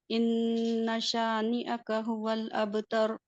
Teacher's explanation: इन्ना पे गुन्ना करना है आपने। इन्ना में हाँ नून मुशद्दद है, इसलिए गुन्ना 2 हरकत से पढ़ेंगे।